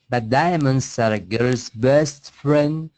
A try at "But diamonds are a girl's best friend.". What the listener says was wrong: Do not say dia. Just say diamonds. Get rid of it. Diamonds. Diamonds.